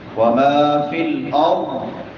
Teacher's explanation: را موٹی ہوگی کیونکہ را سے پہلے زبر ہے